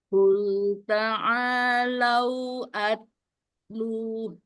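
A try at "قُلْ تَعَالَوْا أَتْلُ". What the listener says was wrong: Tak kedengeran ya keluar udaranya.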